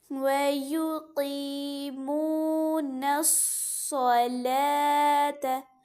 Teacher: لام اور تا اس کے درمیان میں واو لکھا ہے وہ نہیں پڑھا جائے گا، وہ صرف اور صرف لکھا ہوا ہے لیکن اس کی ادائیگی نہیں ہوگی.